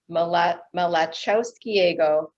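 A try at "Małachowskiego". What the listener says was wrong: No. It's a tough one. The L is a W, so it's Malachowskiego.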